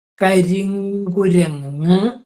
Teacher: കുരങ്ങ് എന്നുള്ളതിൻ്റെ ആദ്യം ഇരിക്കുന്ന കായ ആയതുകൊണ്ട് കായയുടെ അനുനാസികം എന്ന് പറയും. ങാ വരും.